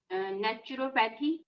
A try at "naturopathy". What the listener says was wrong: Naturopathy. Don't say pathy. It's not. Don't flatten the pathy. Just naturopathy. It's almost like pethy. Pathy. Naturopathy.